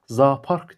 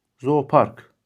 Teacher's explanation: eyni cinsli qoşa saitlər yanaşı gələndə iki qoşa saitdən biri düşür, digəri uzun tələffüz olunur